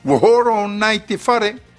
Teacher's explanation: Vous aurez remarqué l'allongement de la syllabe ro de horo sans le signe du tarava. Cela est dû à la liaison du o de horo à l'article o sans l'occlusive glottale.